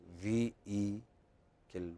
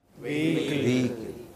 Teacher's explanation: You don't pronounce H there. It's just vehicle. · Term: Without the H